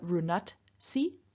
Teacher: in front of si, the second person singular ending, we can get loss of both voice and aspiration